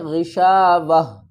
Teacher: تا کو ہم واو سے ملائیں گے، اگر ہم یہاں پر سٹاپ کریں گے، رکیں گے تو اس کو کس طرح پڑھیں گے، غشاوہ۔ اس تا کو اور 2 پیش کو ڈراپ کر دیں گے، ہا کو ساکن پڑھیں گے۔ اگر ہم یہاں پر سٹاپ نہیں کریں گے تو ہم تا کو واو سے ملائیں گے، تا واو 2 پیش تم۔